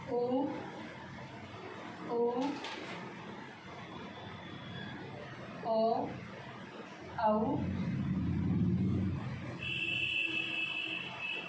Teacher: जिनमें अपने औष्ठ यानी जिन्हें अपन होठ बोलते हैं वो राउंड करते हैं यानी गोलाकार आकृति में घूमते हैं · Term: वृत्ताकार